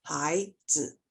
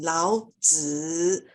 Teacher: So when you say 老子, you make the sound longer because it's a heavier tone.